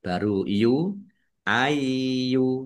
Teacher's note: Ayyuha, ya, ya-nya ada tasdidnya, dibaca ai dulu, ya. Baru yu, ayyu, har-rasulu, ar-rasulu, alif lam samsiah, karena tidak dibaca, langsung masuk ke huruf berikutnya, yaitu ro, ditandai ro-nya ada tasdidnya.